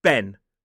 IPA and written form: ben (Ben)